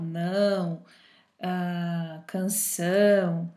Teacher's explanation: pronunciarmos uma palavra com esse som nasal, não, canção, certo? Leões, a gente vai perceber que há uma leve vibração aí no nariz, tá? Por isso que quando a gente tá resfriado, o nariz entupido, enfim, o som sai um pouco estranho, ok?